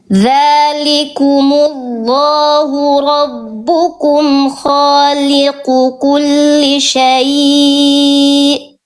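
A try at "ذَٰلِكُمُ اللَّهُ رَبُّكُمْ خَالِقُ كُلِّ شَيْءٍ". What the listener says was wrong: Nah, sya-nya jangan, ini udah bagus, cuman sya-nya lebih lembut, perpindahan dari sya ke ya sukun, linnya jangan syai, tapi khaliqu kulli syai lembut, syai jangan syai.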